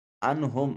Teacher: میم ساکن کے بعد نہ با ہے نہ میم ہے، لہٰذا اس میم کو ظاہر کر کے پڑھیں گے · نون ساکن کے بعد ہا حرف اظہار ہے، نون کو ظاہر کر کے پڑھیں گے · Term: اظہار شفوی